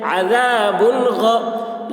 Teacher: तनवीन को ज़ाहिर करके बिला गुन्ना के जल्द पढ़ेंगे, इसको इज़हार कहते हैं।